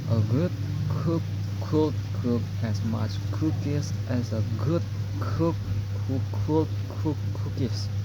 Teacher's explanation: They are both produced at the same place of articulation or velar, but g uses vocal cord vibration while k doesn't.